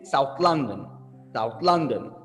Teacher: you have a proper noun and we have two words so we stressed the second word